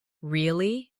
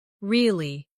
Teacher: Say really with a rising tone to show surprise. Now say really with a falling tone to show you don't believe someone. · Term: intonation